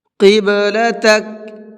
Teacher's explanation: اس با کے اندر قلقلہ کریں گے اس لیے کہ با حروف قلقلہ میں سے ہے